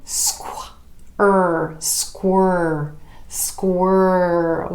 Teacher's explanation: the SK blend moving to a W squirrel squirrel with that tongue curling up a bit sides of